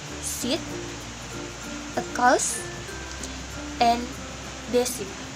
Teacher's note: Ketika kita mengucapkan S, saluran udara pada titik artikulasi sangat sempit, gigi rapat dan bibir menyebar, dan ada getaran di pita suara. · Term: alveolar fricative